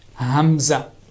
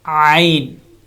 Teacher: hamza comes from bottom of throat, from here. Hamza. And ayn comes from middle of throat.